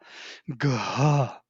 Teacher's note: Yes, this aspirated gha. Gha. Ga, G ga, and ha together.